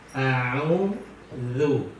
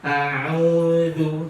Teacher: Huruf zal itu letaknya di ujung lidah dengan gigi seri atas.